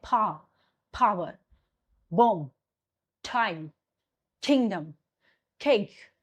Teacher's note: air blow suddenly and you will feel air come outside from your mouth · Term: stop